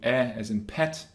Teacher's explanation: a mid kind of front sound would be e as in pet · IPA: ɛ